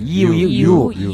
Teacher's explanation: 유는 우와 같으나 이에서 일어난다. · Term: 이중모음